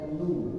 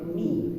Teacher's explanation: Suaranya keluarnya u dan i, bukan o atau e